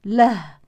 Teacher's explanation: فان وقفنا على كلمه له يزول مد الصله ونقف على الهاء بالسكون